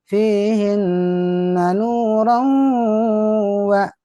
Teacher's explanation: nun tasdid, tanwin ketemu wau, gunnah ditahan. Masuk hidung ditahan.